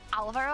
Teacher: I think the accent is on the A because usually in Spanish it goes automatically on the second syllable.